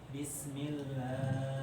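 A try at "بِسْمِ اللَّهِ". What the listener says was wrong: Kepanjangan. Jadi bacaan tahqiq ini rentan dengan perpanjangan, memanjangkan durasi. Ya, hati-hati di sini. Memanjangkan durasi mat harusnya 2 harokat jadi 3 atau 4. Nah, ini tidak tepat. Jadi disesuaikan saja.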